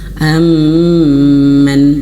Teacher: mim bertasydid itu harus ditahan 3 harokat.